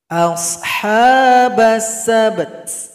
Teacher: Berikutnya ayat 47, cara berhenti pada huruf ta didahului huruf sukun. Ta disukunkan berikan bunyi vokal. Nanti bunyinya ada bunyi hamas atau bunyi angin.